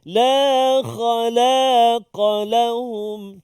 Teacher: Kha isti'la, la tak isti'la, qaf isti'la balik.